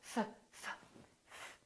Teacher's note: There's no vibration in my vocal cords, so the F is actually a voiceless sound. So that means the S that follows it will also be voiceless, and we will say laughs, laughs.